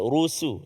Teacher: ra tu tafkhim, sin tu jangan terkesan dengan ketebalan huruf ra